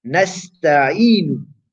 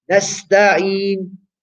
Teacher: There's a dhamma on the nasta'inu, but you're making that nun sakina. Why? Because you are stopping, you're doing waqf. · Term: arid sukun